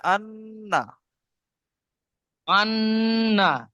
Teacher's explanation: নুনের উপরে তাজদিদ থাকলে গুণনা করতে হবে, তাহলে আন্না।